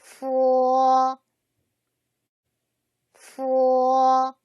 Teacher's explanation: 윗니를 아랫입술에 살짝 대었다가 떼면서 내는 소리이다. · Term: 순치음